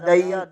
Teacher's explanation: دال زبر کے آگے یا ساکن ہے، یہاں پر یا لین ہوگا، نون کے اوپر کھڑی زبر ہے، اسے ایک الف کے برابر کھینچ کر پڑھیں گے۔